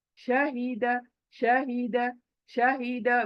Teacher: ये ह पढ़ते वक्त झरने की आवाज नहीं आ रही है देखो क्यों ये सीने से निकल निकल रहा है।